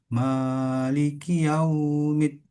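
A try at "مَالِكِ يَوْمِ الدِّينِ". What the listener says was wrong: Tidak perlu terlalu panjang. Maliki yaumiddin.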